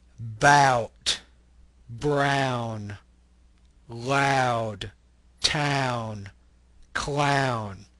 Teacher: The ah sound kind of glides into the oo. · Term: diphthongs